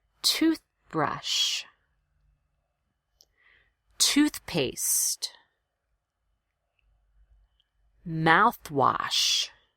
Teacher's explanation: three compound words so these will all get equal stress